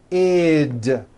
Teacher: if a word ends in a t or a D sound we add the ending ID which is a vowel I followed by a d which is voiced